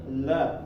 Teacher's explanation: sini nih di bagian atas langit-langit di bagian lengkungannya la la dan dia melibatkan pinggiran lidah juga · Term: huruf lam